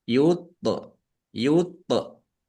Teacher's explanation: Tok sukun bacaan kolkolah. Dibaca memantul, ya, ditampakkan pantulannya. Yuto, yuto, tok ya agak berat.